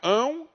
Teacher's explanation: se o ditongo é nasal o que que vai acontecer a maior parte do som vai sair pelo nariz